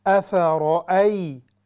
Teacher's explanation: آگے ہے افرأی، رو ہیوی، چونکہ را پر فتحہ ہے اس لیے ہم اس کو ہیوی پڑھتے ہیں